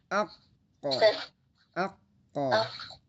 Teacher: kalau dia dua huruf yang qalqalah qof sama th itu bunyinya o bukan e lagi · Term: huruf tebal